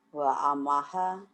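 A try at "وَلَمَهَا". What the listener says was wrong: Itu nggak mungkin alif. Kalau alif itu huruf pasif. Ini huruf aktif. Walamaha, walamaha.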